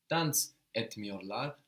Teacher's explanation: the T here doesn't change because we don't have the vowel softening it. No, we have the M there.